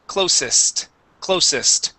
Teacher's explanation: This word here, instead of saying closest, this is going to be an unvoiced S sound